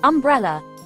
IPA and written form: ʌmˈbrɛlə (umbrella)